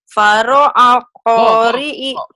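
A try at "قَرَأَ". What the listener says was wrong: Ini kok bukan pak, itu kan titiknya dua. Oh iya, koro a.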